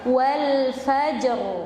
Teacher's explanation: Tebal. Ra sukun sebelumnya fathah ketika waqaf.